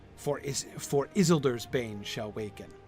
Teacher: by adding the grace note at the beginning, it doesn't take away from the stress. It lays a special stress on Isildur's bane